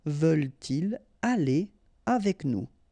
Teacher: Okay, so no liaison after your pronoun.